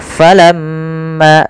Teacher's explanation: Nah, sama sebagai walamma, yaitu ada gunnah di lafal mim dan wajib kita tahan dahulu sepanjang 2 harakat. Maka kita tahan dulu suara mimnya, ya 2 harakat.